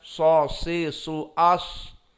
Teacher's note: Maka di sini dinamakan huruf isti'la shad itu karena lisan kita di saat mensukunkan so, si, su, as cenderung naik kepada atas. Di atas al-hanak al-a'la.